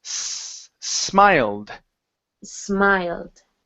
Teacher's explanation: it's an unvoiced s